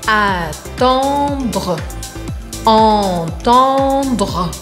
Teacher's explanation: Se você tiver com dificuldade em fazer esse dr do final, lembre que o R, ele vai vibrar aqui embaixo. Então eu faço estalar o D, d, d, e depois eu vibro o R aqui no meio da garganta. · Esse som do meio, on, vocês vão imaginar que estão com uma batata quente na boca. Não é o han, como em português, an, an. É um pouco diferente, porque a gente precisa abrir um espaço maior.